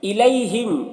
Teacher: یا لین کو نرم آواز کے ساتھ جلد پڑھا جاتا ہے